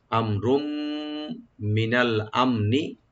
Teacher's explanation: আর মিম সাকিন এখানে আমরা জাহার করব আর রা তানবিন আছে তানবিনের পরে যদি মিম আসছে এখানে ইদগাম উইথ গুন্না করব আমরা